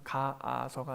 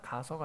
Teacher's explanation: 앞에도 어간 끝이 아로 끝났고 뒤에 어미가 아로 시작해서 가아서가 아니라 가서가 되면서 아가 하나 떨어지는 것, 뒤에 있는 어미의 아가 떨어집니다. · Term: 모음 탈락